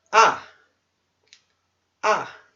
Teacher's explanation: o quarto tom é um tom que desce não tom descendente ele é forte ah ah então você tem